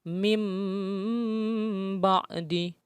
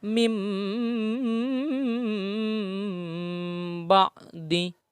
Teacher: Adapun nun mati atau tanwin bertemu dengan huruf ba dan biasanya ada huruf mim kecil di atas ba itu, maka cara membacanya nun mati atau tanwin diganti kepada huruf mim, ya, dan didengungkan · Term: iklab